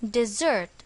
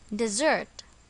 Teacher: notice that the stress is on the second syllable